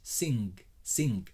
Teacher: a g before the jitter is an n which is co-articulated the n is at the back like an english sing sing so the n is at the back very short end